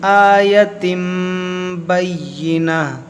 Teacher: یہاں پر ہم گولتا کو ہا ساکنہ سے بدلیں گے کیونکہ یہاں پر جو ہے وقف ہے